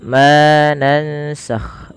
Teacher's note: Ma di sini dipanjangkan dua harakat karena ia kita hukumi dengan bacaan namanya mad th'i atau bisa dikenal juga dengan mad asli. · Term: mad tabi'i